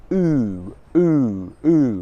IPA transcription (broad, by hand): u: